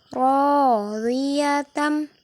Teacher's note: Ro-nya dibaca panjang bertemu dengan alif. Radiyatam. Riyatam didengungkan.